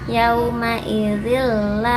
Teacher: Ada tanwin bertemu huruf lam. Ini idgham bila gunah, dimasukkan tanpa disertai dengung.